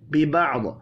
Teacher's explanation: ببعض، وف کی صورت میں ضاد ساکن پڑھا جائے گا، ضاد ساکن پر قلقلہ نہیں کرنا